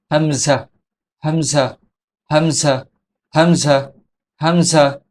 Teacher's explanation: হামজা হরফটি কণ্ঠনালীর শুরু হইতে উচ্চারিত হয়।